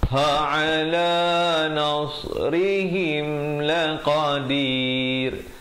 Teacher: ha di pangkal, ain di tengah